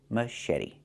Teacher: The t makes a fast d.